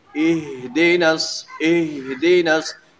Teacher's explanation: اہدنا الصراط المستقیم، یہاں ہا یہ حروف محموسہ میں سے بھی ہے، فحثہ شخص سکت، اور آگے پھر حروف رخویہ میں سے بھی ہے، تو اس لیے اس کو پڑھتے وقت یہ ہا کی آواز بند نہیں ہونی چاہیے